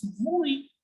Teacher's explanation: Yes as oui. I know there is no V written here, but still they make the sound of V and they pronounce yes as vui.